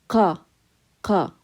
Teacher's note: So when you say qa, you're using the back of your tongue and your throat. So you're not using your tongue.